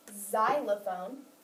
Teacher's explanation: when x is found in the beginning or initial position it sounds like a z